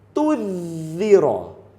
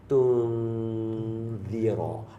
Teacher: Kita tak mau tunzira, kita tak mau tudhira. Kita nak ikhfa tengah-tengah. Tengah-tengah. Tunzira. Dia dengung dulu baru dia masuk.